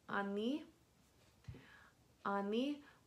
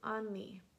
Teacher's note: this O is reduced to an A because of vowel reduction